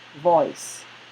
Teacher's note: Ow, out. And the last diphthong moves from O to E